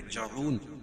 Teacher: جعون وقفہ کی صورت میں یہ مد عارض وقفی ہوگا. اس میں طول توسط قصر تینوں جائز ہے. قاعدہ وہی کہ حروف مدہ کے بعد ہم وقفہ کر رہے ہیں عارضی طور پر تو وہ مد عارض وقفی ہوگا.